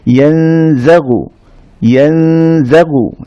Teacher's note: তো নুন সাকিনের পরে যদি জা আসে তখনও আমরা একইভাবে ইখফা করব, অর্থাৎ নুন সাকিনটাকে আমরা গোপন করে গুন্না সহ পড়ব, নেজাল সাউন্ড সহ পড়ব